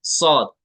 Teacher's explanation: है नेक्स्ट मख जा सीन स जा सीन कदा होता है जुबान की नोक जो टिप ऑफ द टंग है वो लगती है दोनों दातो के अंदरूनी किनारे ऊपर वाले दांत भी और नीचे वाले दांत भी देखिए ये